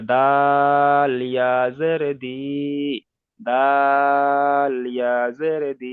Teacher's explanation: ইয়া মাদ্দার টান কিন্তু একালিপ, কিন্তু দালের টান কিন্তু তিনালিপ। দাল যে অক্ষরটা আছে, ওই দালের টান হলো তিনালিপ পরিমাণ। দালটা টান বেশি হবে, দাল ইয়াজের দি, দাল ইয়াজের দি।